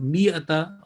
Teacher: this alif is written there, but it has no part. Just meme and hamza will be pronounced, and it will be miyata or miya in stopping.